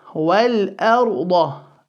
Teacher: The ra sakin preceded by a fatha is full. The da as well is full.